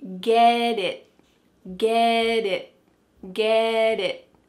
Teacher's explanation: That final T is not really pronounced. Your tongue is going to be in the same place as if you're going to make a T sound, but instead of letting that air flow out, your tongue just stops on the top of your mouth. That's why we call this a stopped T.